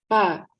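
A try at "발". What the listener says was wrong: Pakai B. Bukan P.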